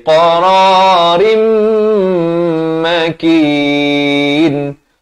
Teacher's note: Dua harakat idgham bi gunnah. Masuk beserta dengung. Asalnya qararin.